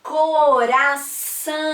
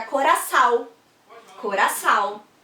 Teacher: é um som que não é nasal, é um som que sai só pela boca